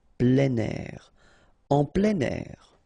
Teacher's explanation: we tend to make the liaison plein air